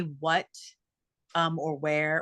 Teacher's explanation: Um which actually to be a total nerd about it, when we say what um or where or something there, it's wh but the way our mouth pronounces it is the way it was said in middle English. And so we actually say the H first, which is why those sounds are very breathy because there's a yeah, there's that H is right in the in the front of the word.